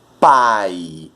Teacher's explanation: Quando eu digo pai, o A é forte, o I é fraco. · É quando nós temos uma vogal e uma semivogal na mesma sílaba. Ou seja, a palavra ela começa com uma vogal, começa com som forte e abaixa para uma semivogal. Por isso que ela decresce, ó. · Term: ditongo decrescente